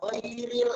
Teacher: Ghairil alif lam di situ alif lam qamariyah sehingga dia dibaca ghairil, ada lamnya terbaca.